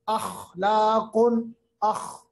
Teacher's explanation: खा को अदा करते वक्त खराश पैदा करनी है